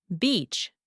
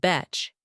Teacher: it's very important to say that long E sound, beach, not betch. Yes, that long vowel sound makes a big difference.